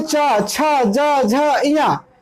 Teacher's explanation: जब हम च बोलते हैं तो हमारी जो जीभ है वो ताल को टच करती है। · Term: तालव्य वर्ग